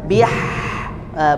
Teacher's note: Jadi hembusannya itu seperti bisikan ya